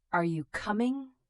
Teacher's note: Your voice goes up at the end of a yes-no question. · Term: intonation